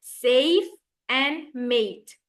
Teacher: The long A in words such as safe and mate is more elongated and contains a stronger Y sound. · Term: long A sound